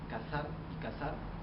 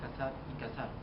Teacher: dice cazar y cazar ellos simplemente lo dicen casar y cazar no se distingue entre la s y la z